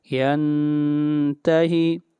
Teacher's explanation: نون ساکن کے بعد تا ہے، اخفا کریں گے